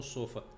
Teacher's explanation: sílaba tônica é a última sofá é a mais forte